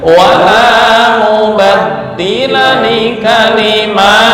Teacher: walaupun ditulis harokatnya lurus tapi tetap dibaca panjang